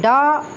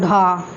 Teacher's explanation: जिन जिन व्यंजन वर्णों का उच्चारण करते समय जिभ्या का अग्र भाग नोक एक झटके के साथ नीचे गिरता हो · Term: उत्क्षिप्त व्यंजन